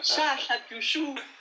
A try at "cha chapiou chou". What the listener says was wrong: Ah, cha chapiou chou. Il n'y a pas de chou. Cha chapiou chou.